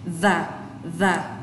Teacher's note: âm TH thò lưỡi và rung ở đầu lưỡi